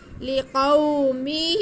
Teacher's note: لِقَوْ، آگے میم کے نیچے زیر ہے، ہا کے نیچے کھڑا زیر ہے، تو میم کو بالکل نہیں کھینچیں گے، لیکن ہا کے نیچے کھڑا زیر ہے جو کہ یا مدہ کے قائم مقام ہے، اس لیے ہم ہا کو کھینچ کے پڑھیں گے